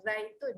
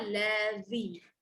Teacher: Itu huruf z, lidah dalam. Untuk huruf zal, lidah keluar